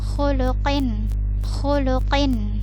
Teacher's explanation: Kalau kin biasa berarti huruf kaf ya. Ini huruf qaf, maka dia ditebalkan